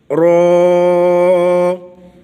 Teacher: زبان کو تھوڑا سا اوپر کی طرف ٹیڑھا کر کے اوپر والے دانتوں کی جڑ میں لگائیں گے اور آواز کو موٹا رکھیں گے، منہ کے اندر آواز کو بھریں گے۔ زبان کی پشت ہلکی سی اوپر لگنی چاہیے اور اس کے ساتھ را ادا ہوگا